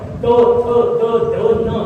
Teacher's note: दाताच्या मागे लागली दंत्य वर्ण